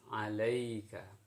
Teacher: Dielastiskan kedengaran antara bacaan baris atas menuju ke huruf ya yang mati. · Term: mad layin